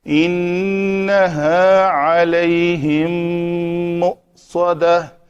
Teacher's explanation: میم ساکن کے بعد میم آ گئی ہے تو اس کو ہم کہتے ہیں کہ یہ ادغام شفوی ہے